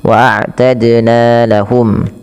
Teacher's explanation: ada qalqalah pada lafal dal yang disukunkan. Waadna lahum ya dannya dipantulkan karena ya qalqalah.